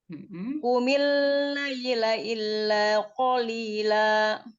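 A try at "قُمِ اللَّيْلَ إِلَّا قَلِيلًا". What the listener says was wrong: Iya, jangan di tasydidkan. Jangan ditasydidkan. Maksudnya jangan digunahkan. laila. Jangan kumil laila, jangan. dianya jadi dengung.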